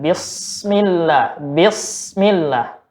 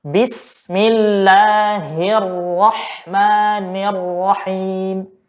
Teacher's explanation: kita tidak boleh membaca huruf sin ini dengan suara tebal, ya. Dengan suara tebal, seperti misalkan bismillah, bismillah. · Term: harus tipis